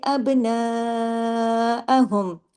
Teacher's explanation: अब बा पे पे कलकला होगा क्योंकि कुतुबजद का लेटर है अब इसको हिला के पढ़ेंगे कलकले के साथ पढ़ेंगे क्योंकि कुतुबजद के जो पांच हरूफ है जब भी वो इस कंडीशन में आते हैं कि वो जज्म के साथ हो तो उन पर आवाज में कलकला हो जाता है।